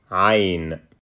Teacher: it starts with a voiced pharyngeal fricative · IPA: ʕ